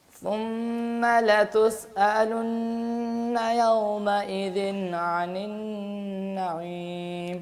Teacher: عین جو ہے یہ آپ کی مسلسل موٹی ہی جا رہی ہے، اس کو باریک کرنے کی کوشش کریں